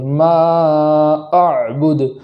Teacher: لفظ ما پر مد کرنے کے بعد حمزہ کو خوب جھٹکے کے ساتھ پڑھیں گے